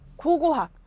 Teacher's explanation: 첫 번째 글자 고, 두 번째 글자 고, 첫 음절, 두 번째 음절. 자, 여기 기역과 기역이 똑같은 기역으로 시작되지만 음성 수준에서는 무성음 K와 유성음 G로 각각 실현된다